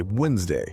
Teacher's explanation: it has a D and an E in the middle that we completely ignore when we speak · Over hundreds of years, human speech became lazier and faster, and we stopped pronouncing the D. We just say Wednesday.